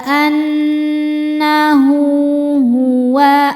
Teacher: Maka cara bacanya ha dipanjangkan dua harakat. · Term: mad silah qasirah